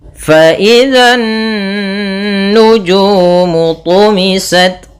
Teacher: kita tahan suara nunnya sepanjang 2 harakat. Fa idzan nu, baru dilepas. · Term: bacaan gunnah